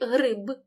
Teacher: кінцевий б вимовляємо чітко він не оглушується